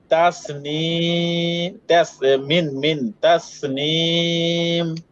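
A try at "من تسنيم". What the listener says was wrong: আচ্ছা, এখানে ভাই আপনি গুরুত্বপূর্ণ একটা বিষয় বাদ দিছেন। কি বাদ দিছে বলেন তো হাসান ভাই? গুন্না বাদ দিছে, ঠিক আছে। হ্যাঁ, এটা তো আপনি একটু বুঝে পড়তে হবে। নুন সাকিন।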